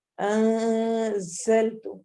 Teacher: نون کو چھپا کے اس کی آواز کو غنہ کر کے پڑھنا ہے